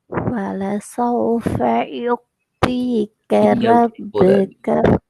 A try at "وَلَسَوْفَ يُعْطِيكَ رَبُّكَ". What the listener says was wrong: தீட உச்சரிப்பு பிழை. தீ அல்ல. அடுக்கணும். அப்பதான் சவுண்ட் வரும். வாய் குவியலா மாறி வருது. அந்த வரணும்.